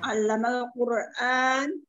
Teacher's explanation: Allamal qur a di situ ada mad badal. Ada hamzah menghadapi alif. Bacaan mad badal, baca dua harokat.